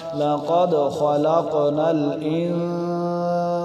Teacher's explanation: الانسان اب یہاں پر نون پر گنہ کیوں ہو رہا ہے نون ساکن کے بعد جو سین ہے یہ نہ حروف ہلکی سے نہ لام را میں سے اس لیے یہاں پر گنہ ہوگا